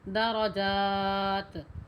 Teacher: درجات یہاں وقف ہوگا، یہ گول تا ہے، پوری پڑھی جائے گی۔ وقف بھی کریں گے تو تا پورا ادا کریں گے